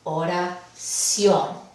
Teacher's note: vemos que la palabra oración lleva el énfasis al final. Entonces es una palabra aguda. · Y vemos que esta última sílaba, ción, lleva la intensidad